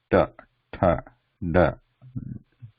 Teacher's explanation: tip of the tongue slightly curved backwards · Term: cerebral